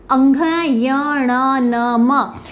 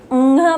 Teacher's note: उसी प्रकार चवर्ग, टवर्ग, तवर्ग और पवर्ग, इन सब वर्गों का जो 5वां अक्षर होता है अंघ, य, ण, न, म, इनकी जो ध्वनि होती है वो नाक से निकलती है, इसीलिए इन्हें नासिकीय व्यंजन कहा जाता है। हम जब ङ बोलते हैं तो मेरा नाक से ध्वनि निकल रही है।